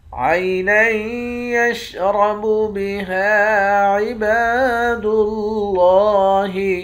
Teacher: نون کو یا کے ساتھ ملا کر یہاں ادغام مع الغنہ کریں گے، یعنی غنہ کر کے پڑھیں گے ، را کو موٹا پڑھیں گے، ہا کے بعد الف ہے،